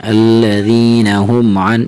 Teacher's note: حرف عین اور حمزہ میں فرق دینا ہے. الذین ہم ان نہیں بلکہ عین کی آواز تھوڑی سی نکالیں